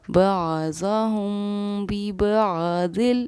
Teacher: ہم کی آواز کو ہم نے ناک میں لیا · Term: اخفاء شفوی